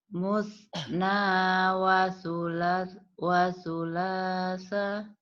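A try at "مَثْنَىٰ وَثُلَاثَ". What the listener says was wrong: nah, ini Ibu betul tapi salah cetak ini. Bukan musna tapi ini masna ya Bu ya, patah. Masna wa sulasa.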